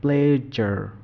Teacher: 2 নম্বরের যে জ, 2 নম্বর জ এর উচ্চারণ করার সময় আমাদের জিহ্বা হালকা স্পর্শ লাগে, উপরের যে দাঁতের পিছনের অংশ এখানে হালকা স্পর্শ লাগে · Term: প্লেজার জ